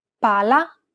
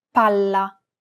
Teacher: double consonants must be pronounced clearly and held for longer periods of time in Italian